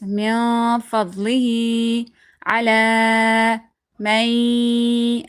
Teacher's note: After that, there is fa from haruf ikhfa. So we're going to be hiding the sound of this noon into the nose.